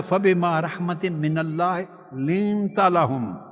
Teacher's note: لام میں light sound ہے، light soft and gentle sound ہے